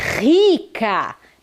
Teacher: percebam o som do R ficou potente ficou forte ele está no início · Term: R no início forte